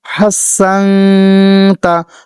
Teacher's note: হাফটি গলার মধ্যে চাপ দিয়ে মুখ দিয়ে বাতাস বের করে উচ্চারণ করবেন। এখানে একটু ধরে রাখবেন।